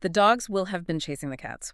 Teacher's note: Will have been got entirely crushed. It became this microscopic little flutter of sound just so I could land on chasing at the right time.